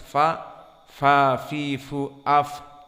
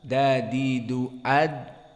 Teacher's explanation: Maka fa-nya ada dari nafas yang keluar. Aflaha, maka dia lawannya dari al-jahr. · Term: hams